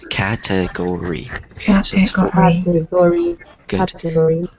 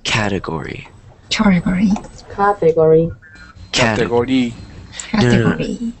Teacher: we got to remember that the stress is on the first syllable